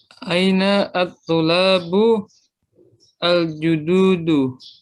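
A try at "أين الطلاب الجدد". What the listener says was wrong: Ya pendek ya.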